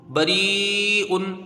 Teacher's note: یا ساکن ہے، اس سے پہلے زیر ہے، یا مدہ ہوگی، با کے اوپر زبر جلدی پڑھا جائے گا، یا مدہ ہے، اس کو کھینچ کے پڑھیں گے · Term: مد متصل